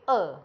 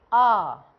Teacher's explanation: तो आप देखिए अ आ, बोलने से ही पता लग रहा है कि अ में बोलने में कम समय लग रहा है और आ बोलने में अधिक समय लग रहा है